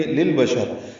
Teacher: ذکرہ، را کو دو حرکات لمبا کرنا ہے، موٹا پڑھنا ہے، یا نہیں پڑھیں گے. للبشر، لام ساکن پہ اظہار ہے، شین کو را سے ملا دیں گے، وقفاً را پر ہوگی.